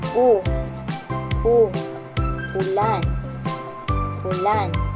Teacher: At ang ayos naman ng dila sa letrang U. U ay nasa gitna at sa likod naman sa bahagi ng dila